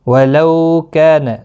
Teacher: لو واولین ہے تھوڑا نرمی کے ساتھ، آدھے الف کی مقدار کے برابر کھینچ کر پڑھیں گے۔ کا الف مدہ ہے، ایک الف کی مقدار کے برابر کھینچ کر پڑھیں گے۔